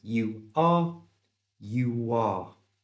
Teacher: Here the customer used a little W sound to join the U and the R together. He didn't say you are, he said you are.